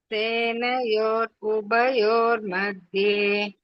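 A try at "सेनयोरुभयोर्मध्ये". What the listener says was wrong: That dhye you have to stress. Bha you have to stress Mahaprana. Once more.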